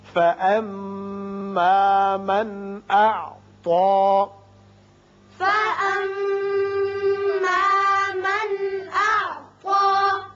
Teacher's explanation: یہاں نون ساکن کے بعد حمزہ بشکل الف ہے، اظہار حلقی ہوگا.